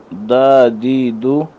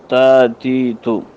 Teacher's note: زبان کی نوک جب اوپر کے اگلے 2 دانتوں کی جڑ سے لگے، ان سے یہ حروف ادا ہوتے ہیں